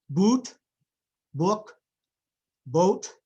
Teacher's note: Let's talk about the back vowels. The back vowels are special because they are rounded. So we have a rounding of the lips at the same time that we are producing the articulation for the vowel. So oo, o, ah.